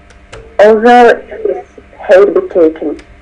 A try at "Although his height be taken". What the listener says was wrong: Although his height. It's not hate, it's height.